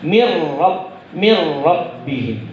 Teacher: Idgham bila gunnah ya. Bila gunnah, tidak dengan dengung.